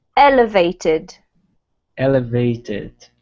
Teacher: the emphasis comes right at the beginning of the word, not on the vated